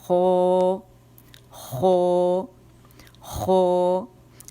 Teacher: یویولا جو ہے اس کے قریب لائیں گے اس کو اور جڑ کی طرف اٹھائیں گے, لیکن یہ کوے کو لگے گی نہیں ہماری وہ جو زبان کی جڑ ہے.